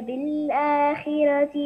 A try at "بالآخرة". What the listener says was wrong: بالآخرة، فخم الراء ،